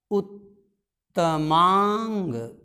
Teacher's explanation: उत्तम में जो अ है और इसका अ मिला करके दीर्घ हो जाएगा